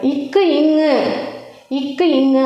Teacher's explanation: நாவின் முதற்பகுதி அன்னத்தின் மேற்பகுதியை பொருந்துவதால் பிறக்கின்றன